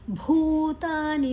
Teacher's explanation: ಭೂ ದೀರ್ಘಕ್ಷರ ಮಹಾಪ್ರಾಣ ತ ದೀರ್ಘಕ್ಷರ